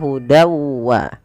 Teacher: Fal wa huda wa di sini masukkanlah bunyi tanwin pada lafal dan awalnya dan karena ia bertemu wau kita masukkan tanwinnya kepada huruf wau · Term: idgam big ghunnah